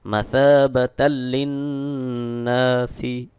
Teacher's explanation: এখানে তানবিনের পরে ঈদগামে বে গুন্নার হরফ লাম এক জবর উচ্চারণ করে লামকে যুক্ত করতে হবে।